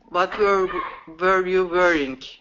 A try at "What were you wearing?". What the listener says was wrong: Okay, so here's what I'm hearing is that W, what you're wanting, your mouth is wanting to do is a V sound. V sound. Okay, so instead of wah wah wah with the lips rounded like this, wah wah wah.